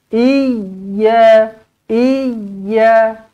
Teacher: Dia bukan panjang, dia tekan, dia hayunkan sikit. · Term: bersabdu